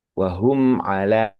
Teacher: Mim sukun bertemu dengan huruf ain itu tidak ada peleburan sama sekali di antara mim sukun bertemu dengan ain tadi. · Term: idhar syafawi